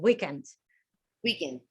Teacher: used the stress on the first syllable